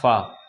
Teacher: फा भी एक ऊष्म संघर्षी व्यंजन है, जिसका उच्चारण स्थान है दंत ओष्ठ यानी दंत और ओंठ, दांत और ओंठ।